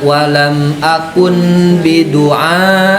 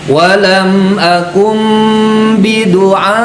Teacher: gunnah iklab itu mengganti huruf nun digantikan dengan huruf mim. Jadi jangan sampai nunnya masih ke bawah.